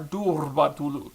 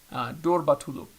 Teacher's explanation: And so if you hear somebody like really hit that R, durbatuluk, that is incorrect. It is a weak R, so you can still roll it, but you won't trill it.